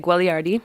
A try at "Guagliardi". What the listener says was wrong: The second G is silent.